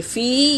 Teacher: فی یا مدہ ہے، ایک الف کے مقدار کھینچیں گے